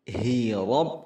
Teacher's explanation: Wajhi rabb, hi rabb, ra tebal, kemudian ba tasydid